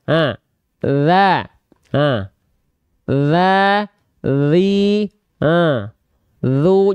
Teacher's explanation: ujung lidah kita disentuhkan ke Ujung gigi seri atas kita dicolek ya hah hah enggak perlu diteka apalagi Hm digigit enggak